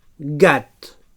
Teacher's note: So velar oclusiu sonor.